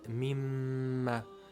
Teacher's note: the meem has shadda, so you apply ghunnah for two counts